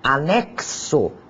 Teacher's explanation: x Além disso pode ter um som de KS como se eu o percebesse um som de k seguido de uma sibilante s